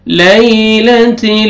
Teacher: یا لین ہے، یا ساکن سے پہلے فتحہ، نرمی سے ادا کریں گے۔ لیلۃ، لام ساکن ہے، لام کو آپ نے ہلانا نہیں ہے۔